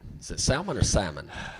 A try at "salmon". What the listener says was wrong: You don't pronounce the L. It's incorrect. Salmon.